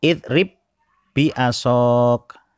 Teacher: Jadi seperti ada tasdidnya di ba yang kedua itu. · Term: idgham